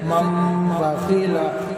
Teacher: نون کو میم سے بدل کر غنہ اخفا کے ساتھ پڑھیں گے. جیسے مم بخیلا لنصفعا بالناصیہ. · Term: اقلاب